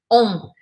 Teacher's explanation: A boca é de O e eu anasalo esse som. Eu não falo on, eu falo on, tudo meio junto. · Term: som de mantra